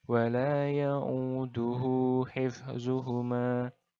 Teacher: Jadi dua harokat. Hu-nya ini dua harokat. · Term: mad silah qasirah